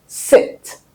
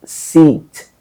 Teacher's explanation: The sound for the action, which is supposed to be a short sound, I, is replaced by a long sound, E, which is a sound you have in seat, the chair itself.